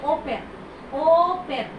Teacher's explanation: আমরা কোথায় জোর দিচ্ছি? ওতে জোর দিচ্ছি। কথা বলার স্ট্রেসটা ওতে